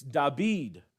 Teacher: in the Greek New Testament when it refers to David it's da bead with a B instead of a V